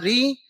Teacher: मूर्धा से निकलेगा ऋषि का ऋ।